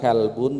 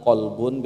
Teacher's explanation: Makhrajnya bareng sebetulnya, cuman kaf di depannya kof.